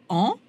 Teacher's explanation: bouche bien ouverte et en ou vous le sentez là aussi le voile du palais s'abaisse et chasse une partie de l'air vers le nez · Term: voyelle nasale